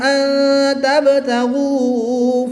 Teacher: نون ساکن کے بعد تا حرف اخفا میں سے ہے، تو یہاں پر اخفا ہوگا، یعنی غنہ زمانی کر کے پڑھیں گے